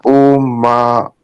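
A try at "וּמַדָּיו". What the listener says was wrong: And pronounce the vav, umadav.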